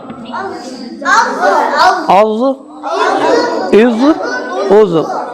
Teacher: जुबान की करवट और ऊपर के दाढ़ों के जड़ से ज़ाद निकलता, औज़ हो गया।